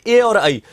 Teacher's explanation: ए और आई कंठ तालु में आए